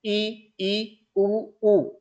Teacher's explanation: मुख लगभग बंद सा होता है, कब, जब हम ई उ उ इन चारों स्वरों का उच्चारण करते हैं